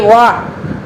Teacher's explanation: दांत और ओष्ठ यानी कि ओठों से इसका उच्चारण हो रहा है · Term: दंतोष्ठ